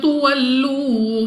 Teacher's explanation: واو ساکن سے پہلے پیش واو مدہ 2 سیکنڈ تک لمبا کرنا ہے، کھینچ کر پڑھا جائے گا، دوبارہ پھر واو ساکن سے پہلے پیش، اس کو بھی 2 سیکنڈ تک کھینچ کر پڑھیں گے۔